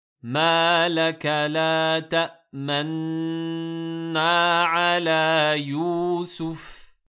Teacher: le nun, le premier, a été assimilé au second, ce qui a donné donc la lettre nun avec une shadda. Donc quand vous regardez dans le mushaf ici, vous avez un nun mushaddad.